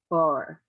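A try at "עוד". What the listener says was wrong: That's a dalet at the end of that.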